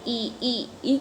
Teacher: ई मुख बंद दरा यानी सवर्त है आवर्ता का है ई ई जब बोलेंगे तो मुख गोल नहीं होगा · बोलेंगे तो मुख गोल नहीं होगा तो ये आवर्ता आकार है ई जो है जीभ के अग्र भाग पर बोला जाता है